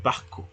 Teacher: Esa R pasa a ser una glotal. Una J glotal.